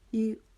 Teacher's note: جب ہم نے ای پڑھا تو ہم نے اپنی آواز کو باریک کر دیا، ای آگے را کے لیے ہم نے اپنی آواز کو پھر موٹا کرنا ہے کیونکہ را کے اوپر پیش آ رہی ہے.